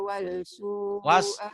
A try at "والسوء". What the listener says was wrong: Wasu, jangan walsu.